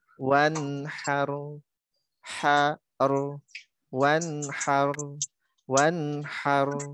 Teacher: ro-nya lagi-lagi tipis ya. Kemudian ha-nya jelaskan.